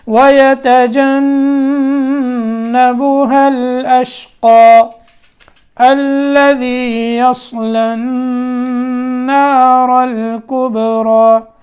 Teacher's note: ملا کر پڑھیں گے تو قاف کو لام سے سیدھا ملا دیں گے